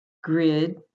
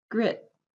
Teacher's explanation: than the length of the time for the second one because the second one ends in a voiceless consonant which cuts off your voice and makes the vowel length shorter